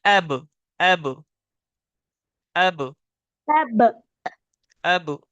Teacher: बा का मखरज है दोनों होठों की तरी। दोनों होठों की मिलने की जगह है, यानी दोनों होठों की तरी। · दोनों होठों की तरी से बा अदा होता है।